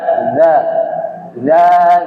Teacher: huruf Dal jadi lidah bagian ujung ketemu gigi seri bagian atas